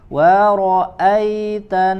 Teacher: ada huruf nun tasydid. Maka dia memiliki sifat gunnah, ya, yang harus sedikit dilamakan, ziyadatul gunnah, tambahan gunnah.